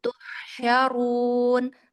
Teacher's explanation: Hamesnya dialirkan, tafasyinya dikasih power. Tuhsyarun. Tafasyinya dorong lagi.